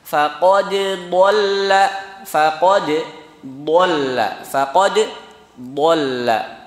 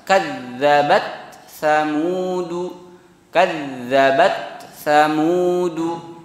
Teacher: Jadi dal dan taknya tetap dibaca jelas, ya.